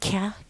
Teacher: Is a plosive, voiceless velar consonant